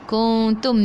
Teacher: Ikhfa hakiki dengan 2 harakat bawa ke sisi huruf ta.